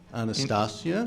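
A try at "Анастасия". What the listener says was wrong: In Russian, it is pronounced with the stress on iya. Anastasia.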